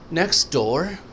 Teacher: T اکثر silent ہو جاتی ہے because of the next sound